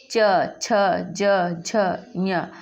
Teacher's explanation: ई, च, छ, ज, झ, ञ, तो ये जिह्वा के द्वारा तालव्य से बोला जा रहा है, इसलिए इसका उच्चारण स्थान तालव्य।